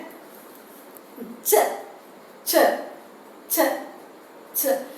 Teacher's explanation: There is an audible friction. We can hear an audible frictional noise · So the front of the tongue is raised towards the palato-alveolar portion and it is completely closure.